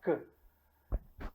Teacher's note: o som K é um som oclusivo, é um som bruto, que impede a passagem do ar. Normalmente, quando esse som K oclusivo está entre duas vogais, ele tende a ficar mais suave. · Quando pronunciamos o K, tem que só pronunciar a vogal isolada, a consoante isolada, K. Percebemos que as cordas vocálicas, elas não se mexem, elas não vibram. E o som K é um som oclusivo, é um som bruto, que impede a passagem do ar. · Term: som surdo